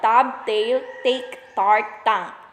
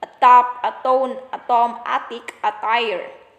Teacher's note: Voiceless alveolar stop, T.